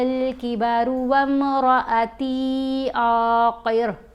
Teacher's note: دونوں جگہوں پر را کو ہم نے پر پڑھا